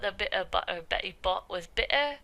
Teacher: a kind of Cockney accent where glottal stops are really pronounced